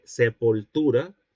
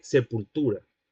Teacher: el caso de sepultura con O, es decir, con el semicerrado posterior en lugar de sepultura con U, es decir, con el cerrado posterior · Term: vacilación de vocales átonas